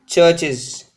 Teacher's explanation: If the noun, singular noun, ends in these sounds, these 6 sounds, that is s, sh, ch, z, zh, j, then the suffix that is added to the singular noun s or es is pronounced is, but not like s or z